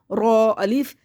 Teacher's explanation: رو میں تکریر ہوگی، اور رو موٹا کرنا ہے